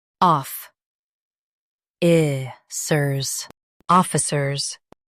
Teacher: Stress off and keep i-cers smooth.